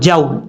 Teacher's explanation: جب واو ساکن سے پہلے زبر ہو تو واو لین ہوتا ہے، یعنی اس واو کو لمبا کر کے نہیں پڑھیں گے. اور اگر آپ وہاں پہ وقف کرتے ہیں تو وقف میں بھی ویسے ہی پڑھا جائے گا جیسے ملا کے پڑھتے ہیں.